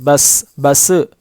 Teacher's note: بغیر قلقلہ کے یہاں پر باؤنس نہیں ہوگی ہماری آواز، مخرج ٹکر نہیں کھائے گا، الگ نہیں ہوگا